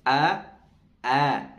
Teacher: memiliki sifat Al infithar yang dimana bagian lidahnya ini menurun